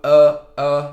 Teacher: Então esse é o som do schwa. Esse é um dos sons que você vai mais escutar no inglês, que é o som neutro, é um som rapidinho, relaxado.